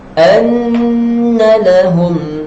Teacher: Kemudian kita jumpa nun yang bertanda sabdu, maka di sini kena dengung 2 harakat. Kalau hukum tajwid itu nama dia wajibal ghunnah.